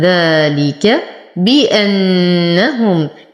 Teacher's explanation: نتم كسرة الباء. نحقق الهمزة. نشد النون بغنة أكمل ما تكون. نتم ضمة الهاء.